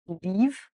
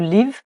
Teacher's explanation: On fait un i long, leave, pour ne pas confondre avec to live, vivre, habiter, qui lui comporte un i court.